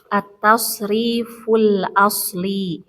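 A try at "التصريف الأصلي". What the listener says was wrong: Ditambahkan ini ya-nya harus tasydid. Liyu gitu.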